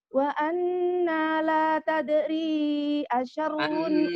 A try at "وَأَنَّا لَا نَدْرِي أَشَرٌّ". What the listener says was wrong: Anna la nadri pakai nun. nadri